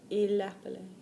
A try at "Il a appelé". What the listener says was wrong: Now, I don't want to hear il a appelé. I want to hear just enough of the one in the middle. Il a appelé. You gave me 3 there.